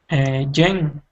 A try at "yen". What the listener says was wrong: Okay, when we're pronouncing English, the Y is pronounced a Y sound, so it's a yen.